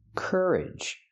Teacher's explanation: Put the stress on the first syllable.